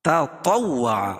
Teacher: پہلے والی تا کو باریک اور دوسری والی تا کو پور پڑھیں گے ، کیوں؟ دوسری والی تا جو ہے حروف مستعلیہ میں سے